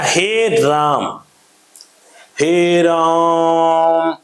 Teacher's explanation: मतलब कहीं ना कहीं ये एक ह्रस्व से जो है एक समय की जो मात्रा वाला ह्रस्व स्वर था, उससे कहीं ना कहीं तीन गुना समय लग रहा था। किसी को हम लोग लंबा करना था, तिगुना करना था, तो उसके अंदर में क्या हिंदी का जो है वह तीन लिख देते हैं।